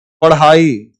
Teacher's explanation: ये नीचे बिंदी वाला जो उछिप ध्वनियां है ये हमेशा अंदर लगती है